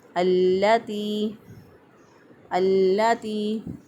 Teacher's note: یہاں پر لام ال کا ادغام جو ہے وہ ہوا ہے، لام ال اس کے بعد حروف شمسیہ میں سے کوئی حرف آ جائے تو وہاں پر لام ال کا ادغام ہو جاتا ہے۔ تو یہاں پر لام ال کے بعد لام حروف شمسیہ میں سے آ گیا تو اس لیے ہم نے لام کا لام میں ادغام کر کے پڑھا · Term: ادغام شمسی